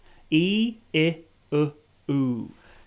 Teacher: So my mouth is starting like wide and then going more closed, or like from on a horizontal way.